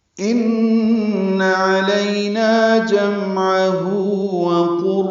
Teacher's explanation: ان من مشدد پہ غنہ ہے، علینا لیا الین ہے، نا الف مدہ ہے، عین وسط حلق سے ادا ہوگا.